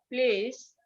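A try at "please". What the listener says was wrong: একটু টান দিতে হবে, আর দন্তাস্ব বলা যাবে না, বর্গীয় জি বলতে হবে। প্লিজ।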